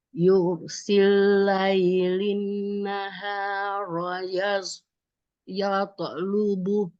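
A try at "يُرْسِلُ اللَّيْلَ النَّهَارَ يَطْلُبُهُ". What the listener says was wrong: Oke, tapi ini tadi bacanya pakai sin, harus pakai shin. Yurshi, shi.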